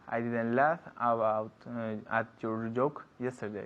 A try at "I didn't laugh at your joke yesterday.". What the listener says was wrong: Okay, las D's un poco flojo again. Didn't.